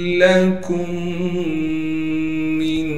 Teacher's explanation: काफ को मीम से मिलाएंगे, फिर दोनों मीमें एक साथ आ गई हैं लिहाजा इन दोनों को हम आपस में मिला देंगे गुन्ना के साथ। फिर इस मीम को हम नून साकिन से मिलाएंगे इख्फा यानी गुन्ने के साथ।